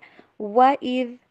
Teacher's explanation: وا کو انگلش میں ڈبلیو والی ساؤنڈ کے اوپر پڑھیے، بلکہ وی والی ساؤنڈ کے اوپر آپ نے نہیں پڑھنا